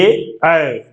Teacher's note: ए बोलोगे तो कंठ से आवाज आएगी, ऐ बोलोगे तो जीभ ऊपर तालु से टकराएगी। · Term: कंठ तालव्य